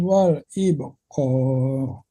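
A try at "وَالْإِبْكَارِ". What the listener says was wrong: Nah, ketebalan Bapak kafnya jangan wal ibqar, wal ibkar. Tipiskan katanya wal ibkar.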